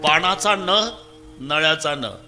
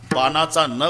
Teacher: नळ्याचा न उच्चारा तर जीभ दाताला स्पर्श करणार बानाचा न उच्चारा अजिबात दाताला लागत नाही